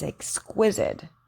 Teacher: the q sound or qua is a combination of the k and w sound